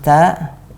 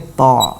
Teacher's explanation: Kalau ta tidak naik lidah belakang, kalau to naik lidah belakang.